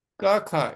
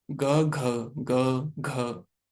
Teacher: क ख इसमें वाइब्रेशन नहीं है। ग घ इसमें वाइब्रेशन हो रही है गले में। बोलो एक बार क ख ग घ वाइब्रेशन हुई ना गले में। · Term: घोष अघोष